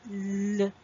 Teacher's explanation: So to know if it's a voiced sound, you can put your fingers on the throat, and when you pronounce it, L, you can feel the vibration or humming sound in the throat